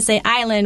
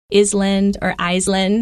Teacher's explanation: everyone should remember that island, even though there's an S in there, right? But the S is silent.